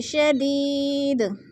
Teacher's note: یا مدہ کو 1 الف 2 حرکات کے برابر لمبا کر کے پڑھنا ہے